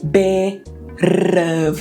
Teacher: Quando a gente linka vogal e consoante, né? Esse T vai se transformar num R. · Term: flap T